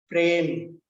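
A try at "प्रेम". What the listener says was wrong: Prema. Prem nasti. Prema. Prema. That's the difference. When you are pronouncing in Hindi, you will pronounce this as Prem. Prem. In Sanskritam, if it has to become Prem, what has to happen? What will be here? There will be a halanta. There will be a halanta. Then it is Prem.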